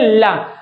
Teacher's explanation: जब ला बोलेंगे तो जीभ क्या होती है? थोड़ा से मुड़ जाती है। जब मुड़ जाती है तो दोनों पार्श्व, दोनों तरफ से क्या होती है? सांस निकलती है। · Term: पार्श्विक वर्ण